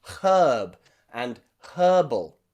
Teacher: I'm from the UK, so you can hear me pronounce the letter H at the beginning of these words.